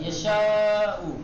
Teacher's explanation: شین حروف استعلا میں سے نہیں ہے، حروف استفال میں سے، اس کو نرمی کے ساتھ پڑھا جاتا ہے، تو الف مدی کو بھی نرمی کے ساتھ یشاء۔ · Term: ترقی